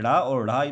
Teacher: जाते हैं आप लोग बोल के देखिए ड़ और ढ़ मतलब जीभ हल्की सी ऊपरी मुंह का जो छत होता है उससे मोड़ के बोला जाता है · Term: मुर्धन्य